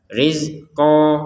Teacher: Kalau kita berhenti dibaca panjang qof-nya dua harakat. Rizqo. Kalau kita lanjut maka fathatainya qof ini nyambungnya ke qof lalu dibaca dengan samar. · Ini tulisannya rizqon. Kalau kita berhenti dibaca panjang qafnya 2 harokat.